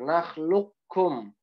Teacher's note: makhraj dari qaf dan kaf itu kan pangkal lidah ketemu langit-langit belakang ya. Jadi ke qaf dulu baru ke kaf sedikit geser. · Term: idgham mutaqarib